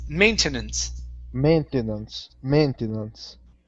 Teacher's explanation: good good okay let's go to uh the word maintenance okay so our stress is at the very beginning